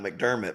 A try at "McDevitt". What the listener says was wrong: You said McDermott. You said McDermott.